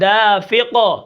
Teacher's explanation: یہ جو آخر میں قاف کی آواز آ رہی ہے یہ قلقلہ کی ہے